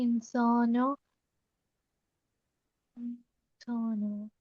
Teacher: नून साकिन है और 15 हरफों में से सीन आ रहा है तो यहाँ नून की आवाज को नाक में छुपा के पढ़ेंगे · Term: इख्फा